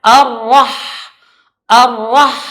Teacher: coba di tipis sedikit kan lagi maka bacanya arah arwah ia sedikit getarannya dan dia tetap dengan tafkhim nya tebal karena roh yang berbaris fathah itu mempunyai sifat tafkhim yaitu tebal